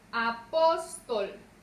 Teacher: Lleva su sílaba tónica en la penúltima sílaba y termina en consonante L. Esto nos indica entonces que apóstol irá acentuada.